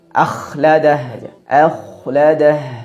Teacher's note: kesalahan yang sering terjadi pada pengucapan huruf k yang kedua adalah suaranya terlalu kasar terlalu banyak suara seraknya